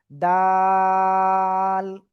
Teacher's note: ওই একই জায়গায় জিহ্বার আগা উপরে 2 দাঁতের গোড়ায় লাগাবেন, লাগিয়ে আপনি এই অক্ষরটা উচ্চারণ করবেন।